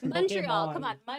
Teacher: The stress is on the last syllable.